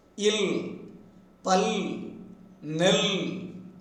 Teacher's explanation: The tip of the tongue is having a tight contact with the upper teeth ridge, and the air pushed out by the vocal cords escapes through the sides of the tongue and gets out through the mouth.